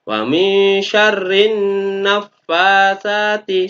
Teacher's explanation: Alif lamnya tidak boleh dipertegas, dibaca jelas, tapi harus langsung masuk pada nun.